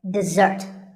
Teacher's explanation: notice that the first syllable is diff and the second starts with a z sound we stress the second syllable